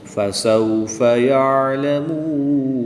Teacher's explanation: واو ساکن سے پہلے میم پر پیش تو واو مدہ کے بعد نون کی زبر کو وقف کی حالت میں ساکن کریں گے اور یہاں پر وقف کی حالت میں مد عارض ہوگی، 2 سے 3 الف تک کھینچ کر پڑھیں گے